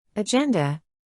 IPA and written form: əˈdʒɛndə (Agenda)